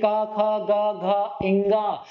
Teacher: कंठ से। ये आपका गले से, कंठ से उच्चारण हो रहा है। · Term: कंठ व्यंजन